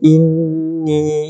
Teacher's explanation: nun itu nun yang bertanda syaddah, nun musyaddadah, bertanda sabdu, maka kita wajib dengung 2 harakat